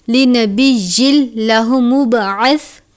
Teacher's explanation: ادغام کا قاعدہ لگتا ہے، لیکن لام اور را پر غنہ نہیں کرتے، اس لیے ہم اس کو لنبی نہیں پڑھیں گے بلکہ لنبی اللہ مبعث، تنوین کو لام مشدد سے ملا کر ادا کریں گے. با پر قلقلہ کرتے ہیں، لاہ مبعث اس طرح سے ادا کریں گے.